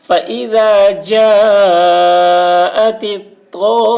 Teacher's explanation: مد لازم کو 3 یا 4 الف کے برابر کھینچ کر پڑھیں گے